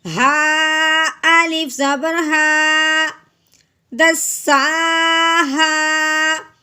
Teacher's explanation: اس ہا کو ایک الف کے برابر لمبا کرنا ہے اس الف اور زبر کی وجہ سے